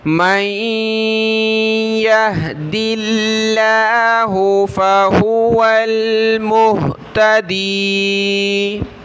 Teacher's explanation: دال پر زیر ہے تو لفظ اللہ کو ہم نے باریک پڑھنا ہے